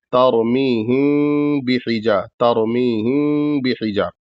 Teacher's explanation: میم کو پورا نہیں ادا کرنا ہے، بلکہ جو ہے اس کو ہلکا سا ادا کرنا ہے اور ناک میں آواز لے جانی ہے غنہ کرتے ہوئے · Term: اخفاء شفوی